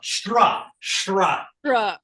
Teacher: told you this is retroflex sha, retroflex ta, and an R after it